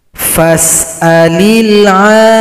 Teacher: Berikutnya ayat 113, ada lagi mad lazim mutsaqqal kalimi. Panjangkan ain 6 ketukan atau 6 harokat baru tasydid.